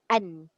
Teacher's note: Maknanya bila kita kata sembunyi, bunyi nun tu dah tak bunyi betul-betul nun. Kalau izhar dia bunyi nun yang mati an. Tapi ikhfa dia tak boleh bunyi an dah.